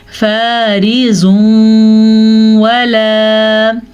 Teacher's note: یاد رکھیں، نون ساکن یا نون تنوین کے بعد آنے والا حرف اگر یا، میم، واو، نون ان میں سے ہوگا تو ہم ان کو آپس میں ملانے کے ساتھ ساتھ غنہ بھی کریں گے · واو کے اوپر زبر ہے تو واو کو ہم کھینچ کے نہیں پڑھیں گے، نہ ہی لمبا کریں گے، جبکہ الف مدہ کی وجہ سے ہم اس کو کھینچ کے پڑھیں گے.